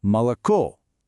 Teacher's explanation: when it's not stressed, it basically transforms into a short, quick a sound